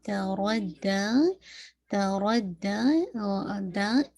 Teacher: sorry دال کو آپ نے ٹوائس پڑھنا ہے، را کو ہیوی کرنا ہے ، اور دا جو ہے جب آپ اس کو پڑھیں گے